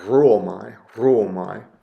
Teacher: Maybe you give a little bit of a trill to the R